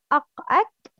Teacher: Two letters from the deepest part of the tongue, aqsa lisan, qaf and kaf